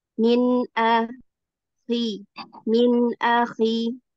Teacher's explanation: نون ساكنة مظهرة قبل الهمزة المفتوحة